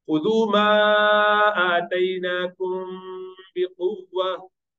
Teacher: When Mim Sakina is followed by Ba, you do Ikhfa Shafawi, it's a little bit prolongation.